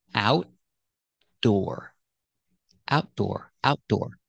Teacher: you put your tongue up in the T position but you don't release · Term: stop T